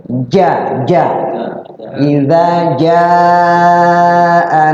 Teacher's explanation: kalau jim ja itu lidah kita berada di langit-langit paling atas dan melengkung.